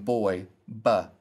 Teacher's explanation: Now, by hard, I mean that there's a full stop of air rather than air passing through the mouth to create the sound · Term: hard B